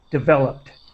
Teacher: the word developed with a T sound at the end, as quick as possible